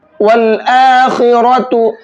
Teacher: खा और रा दोनों को मोटा करके पढ़ेंगे